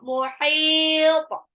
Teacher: To-nya harus pantul. Pantulnya ke to.